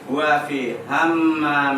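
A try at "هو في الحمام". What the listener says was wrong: Fil alif lam. Kita sudah belajar dibaca alnya. Fil hammami. enggak hanya pendek. Ham langsung hammam. Iya, panjangin namanya hammami.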